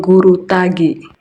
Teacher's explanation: G. Hambatan letup velar bersuara